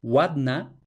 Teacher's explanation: una L velarizada, es decir, una u en polaco, va a fonologizarse como W. Y así, por ejemplo, tenemos watna, que en una etapa más antigua del polaco debía ser algo así como latna, pues de latna pasamos a watna.